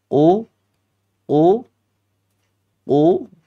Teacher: Jadi bagian lidah yang paling terdalam itu qof.